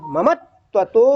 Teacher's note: तो ये माँ के बाद जो आधा ता आ रहा है, वो ता को 2 बार पढ़ना